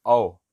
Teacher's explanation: फिर जब बोलेंगे ओ अर्ध समृत में, ओ हाफ क्लोज मुंह है। लेकिन औ का उच्चारण जब करेंगे औ तो हमारा मुंह थोड़ा सा हाफ ओपन होता है